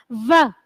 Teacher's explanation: मूर्धन्य व्यंजन का ही नाम दिया गया है। व, जब हम व बोलते हैं तो नीचे वाला दांत और ओष्ठ दोनों आपस में मिलते हैं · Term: दंतोष्ठ